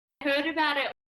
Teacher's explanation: The I sound in it sounds more like the schwa sound here. And the T sound, she stops herself just before she makes the T sound.